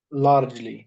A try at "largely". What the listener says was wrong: Largely, exactly, because this is adverb.